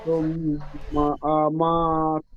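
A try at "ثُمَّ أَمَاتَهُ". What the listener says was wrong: তা টান দিচ্ছেন, তার উপর যাবার আছে। সুম্মা, মিম আলিফ যাবার মা, একালিফ টান হবে। সুম্মা, সুম, তাহা নয়, তাহু, হার উপর পেশ আছে।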